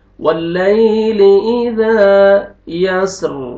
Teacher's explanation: زال کو آپ نے کھینچنا ہے 1 الف کے برابر اور زال کو نرمی سے بھی ادا کرنا ہے تاکہ زا میں آپ کا آواز مکس نہ ہو